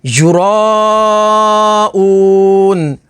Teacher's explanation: وقف تام کی وجہ سے نون کو ساکن کر دیں گے تو حروف مدہ کے بعد عارضی سکون تو مد عارض ہوگی